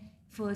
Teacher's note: लेबियोडेंटल है, lips plus teeth, fricative है यानी कि नैरो चैनल के थ्रू हम उसको रिलीज करते हैं